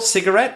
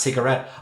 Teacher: So sometimes I stress the first syllable, cigarette, and sometimes the last, cigarette.